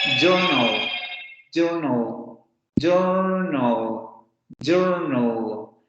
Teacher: Porque el fonema lateral está funcionando como el núcleo de la sílaba.